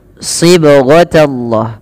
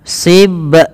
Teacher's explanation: pada lafal huruf ba yang dia sukun ini perlu dipantulkan dalam melafalkannya. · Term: qalqalah